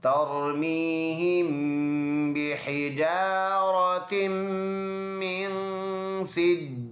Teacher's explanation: तरमीहिम में ये रापुर अदा होने वाला है क्योंकि पहले ज़बर है। मीहिम इसमें गुन्ना करेंगे।